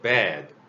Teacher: 이 발음은 좀 입을 크게 벌리는 거죠.